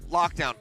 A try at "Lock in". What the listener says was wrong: Lock in, not lock down. He said lock down.